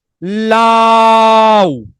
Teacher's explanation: আমি যদি বলি লাউ, খেয়াল করেন, লাউ, দেখেন লা, ল এর পরে আটা আমি ইচ্ছা করে অনেক বড় করতে পারতেছি, লা অনেক বড় করতে পারতেছি, কিন্তু উ, এই উ কে কিন্তু আমি চাইলেও টেনে লম্বা করতে পারছি না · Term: অর্ধ স্বরধ্বনি